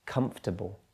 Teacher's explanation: Stress there, primary stress is at the beginning of the word